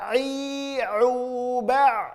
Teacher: huruf a murni keluar dari tengah-tengah tenggorokan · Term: huruf ain